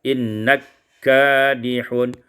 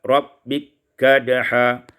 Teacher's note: Pada surat Al-Insyiqaq ayat yang ke-6, innaka kadihun, idghamul kaf fil kaf, diidghamkan kaf pada kaf